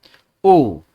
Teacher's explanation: ओंठ भी आपके गोल हो रहे हैं, साथ में कंठ, गले से भी आपकी आवाज बाहर निकल रही है